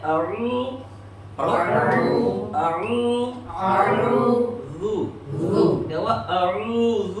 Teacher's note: حمزہ کو کھینچنا نہیں ہے اور عین کو ایک الف کے برابر کھینچنا ہے اور زال کے اندر زا کی آواز نہیں آنے دینی